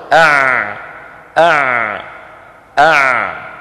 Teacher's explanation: يجري الصوت معها قليلا ثم يقف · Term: العين